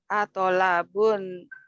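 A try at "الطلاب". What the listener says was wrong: Bukan to tapi dia tu. Benar. Tu. Lamnya tasdid. Tu.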